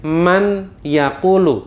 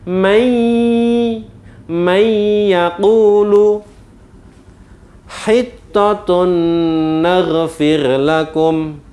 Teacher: Membacanya yang benar dimasukkan. Jadi bacaan nun ini masuk ke dalam huruf ya, kemudian didengungkan. Mai, nah nunnya hilang, nunnya samar, masuk pada huruf ya, kemudian didengungkan. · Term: idgham bi gunnah